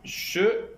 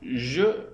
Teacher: Aussi appelle-t-on ces deux constructifs des constructifs prépalatales. La consonne che est sourde et la consonne je est sonore.